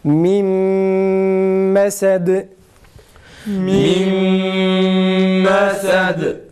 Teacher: İdgamla birlikte gunne yaparak okuyacağız. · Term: İdgam ma'al gunne